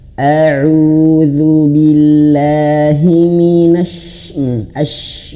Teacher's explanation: ketika ash itu harus betul-betul angin keluar, ash, seperti itu ya.